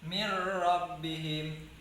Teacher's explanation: Yang nggak boleh itu mir rabbihim. Seharusnya mir rabbihim itu tanpa dengungan.